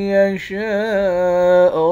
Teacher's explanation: شین کے بعد الف ہے، اس الف پر مد ہے، اس مد کو 5 الف کی مقدار کھینچ کر پڑھتے ہیں · لفظ اللہ کے لام کو موٹا پڑھیں گے